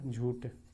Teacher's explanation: अल्पप्राणीकरण की प्रवृत्ति मिलती है इसमें